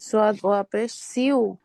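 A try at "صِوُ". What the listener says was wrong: আপু পেশ না জের, হ্যাঁ, সদ ওয়াউজের সিউ।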